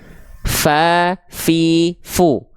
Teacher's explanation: huruf Fa itu dia punya sifat hams tapi kadarnya mengalir nafas Fa fi fu bisa terasa dari pelafalan kita ya Fa fi